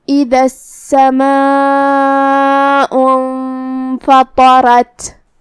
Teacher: پھر حرف الراء آتا ہے جو کہ را پہ زبر ہے تو یہاں را کا بھی حکم ہے تفخیم، تو ہم پا کو اور را کو دونوں کو بھاری آواز میں پڑھیں گے